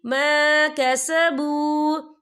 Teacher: واو ساکن ہے، واو ساکن سے پہلے پیش ہے، تو ہم اسے 2 یا 3 حرکت کے برابر کھینچ کے پڑھیں گے۔ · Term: واو مدہ